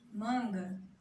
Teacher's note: A parte mais forte dessa palavra é a penúltima sílaba mais forte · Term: paroxítona